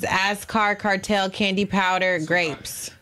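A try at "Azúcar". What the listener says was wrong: Azucar. Azucar. There's no R. Azucar.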